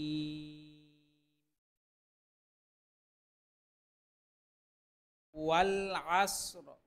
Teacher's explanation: আইন কণ্ঠনালীর মধ্যখান থেকে উচ্চারণ হয়